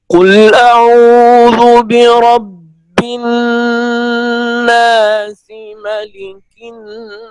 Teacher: لام میں آپ نے آواز کو مکمل جاری رکھا ہے